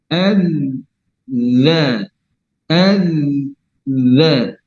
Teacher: Itu kan ada pertemuan antara ujung lidah dengan ujung gigi seri. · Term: huruf zal